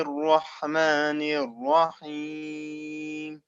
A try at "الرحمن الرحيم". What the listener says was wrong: Okay, don't say Ar-Rahim. There's no alif after Ra. Ar-Rahim.